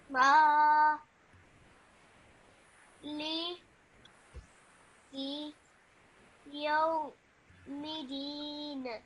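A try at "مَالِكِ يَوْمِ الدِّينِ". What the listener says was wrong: Just make sure that when you join the meme to the dal, you do it with a bit of force because the dal has a shadda. Middin.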